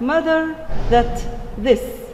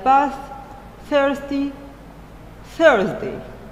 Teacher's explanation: As voiced, the, like mother, that, this, or voiceless, the, like bath, thirsty, Thursday